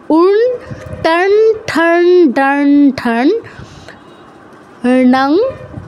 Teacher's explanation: এই 5 জন যদি অনুসারের পরে থাকে, সেই ক্ষেত্রে অনুসারের উচ্চারণটা হয় আপনার মূর্ধন্য হসন্তের মতো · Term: মূর্ধন্য অনুসারের উচ্চারণটা